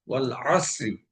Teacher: এখানে আইন গলা চেপে আদায় করতে হবে